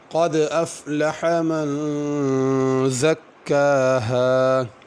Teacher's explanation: قد کے قاف کو پر کرنا ہے، دال پر قلقلہ کرنا ہے